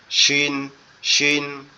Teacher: তাহলে সিন হবে সিন হচ্ছে জিহ্বার আগা জি সিন সিন দুইটা নিচের, অক্ষর জি জিহ্বার আগা নিচের দুই দাঁতের আগার সঙ্গে লাগবে, লেগে উচ্চারিত হবে সিন সিন সিন। আর শিনটা হচ্ছে একটু শক্ত আওয়াজ হবে, জিহ্বার মধ্যকান উপরের তালুর সঙ্গে লাগবে,